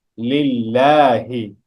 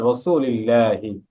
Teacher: এখানে আল্লাহ শব্দের লামের আগে কি আসছে? জের আসছে, চিকন করে পড়তে হবে।